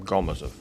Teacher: The stress is on the first syllable in my last name.